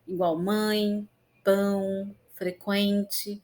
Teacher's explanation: Nós pronunciamos esses sons com parte do ar saindo pela boca e parte pelo nariz. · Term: ditongos nasais